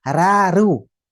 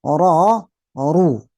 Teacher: dalam bahasa tajwid kalau ra itu tipis, kalau ro itu tebal